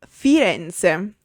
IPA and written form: fiˈrɛnʦe (Firenze)